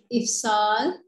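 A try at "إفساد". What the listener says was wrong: Ifsad. Dal, dal, hudu ni. Ifsad.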